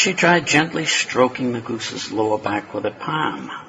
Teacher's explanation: the start/palm vowel is pretty frontal, kind of sounds like a Bostonite saying it